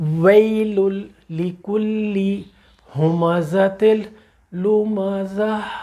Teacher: یہ گول والی تا ہا میں بدل جائے گی ایک دم جب ہم رکے ہیں